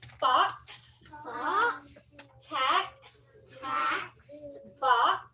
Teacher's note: is it vibrating no it's not so it's an unvoiced sound